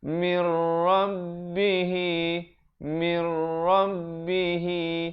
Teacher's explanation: Di situ nun mati bertemu ra, idgham bila gunnah. Kalau tadi mau'izatun itu idgham bi gunnah, manakala mir rabbihi idgham bila gunnah.